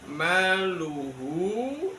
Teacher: mad sila yang dibaca pendek pendeknya cukup dengan dua harakat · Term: madsila qosir